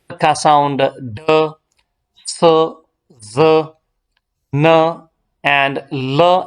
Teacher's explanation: So these are sounds formed with the front part of the tongue on the alveolar ridge, which is the rough bony ridge immediately behind and above the upper teeth. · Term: एल्वियोलर्स